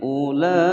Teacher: Ulai mad wajib mutasil dibaca panjang 5 ketukan.